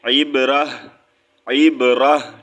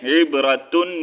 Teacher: ہا کی آواز نکالیں گے سینے سے آواز نکالیں گے · جب ہم یہاں پر قرآن پاک میں کہیں بھی رکیں گے تو ہم اس کو ساکن کر دیں گے، اس کی ہا کی آواز نکالیں گے